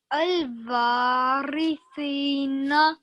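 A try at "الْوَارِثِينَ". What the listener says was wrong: Good, well done.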